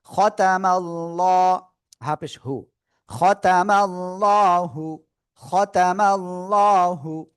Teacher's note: আল্লাহ শব্দের লামের ডাইনে জবর বা পেশ হলে কি করবো আমরা মোটা আওয়াজে পড়বো